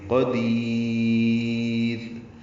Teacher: دال کو لمبا کر دیں گے اور را باریک پڑھیں گے.